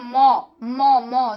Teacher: তারপরে দেখো ম, ম, ম দুটা ঠোঁট লাগছে, দুটা ঠোঁটের সাথে ঠোঁট লেগে ম উচ্চারিত হচ্ছে, ম, তাহলে এটা হচ্ছে ওষ্ঠ বর্ণ।